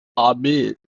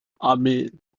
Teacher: For the third one, hatef kametz, is pronounced as a ah, as in amid. It's not really o. It's halfway between a and o